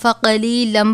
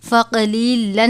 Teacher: تنوین کے بعد میم مشدد ہے، میم مشدد اور نون مشدد ان دونوں پہ ہمیشہ غنہ ہوتا ہے، تو یہاں پر بھی ہم فقلیلم پڑھیں گے، فقلیلن نہیں پڑھیں گے، بلکہ اس میم مشدد پہ غنہ کر کے پڑھیں گے۔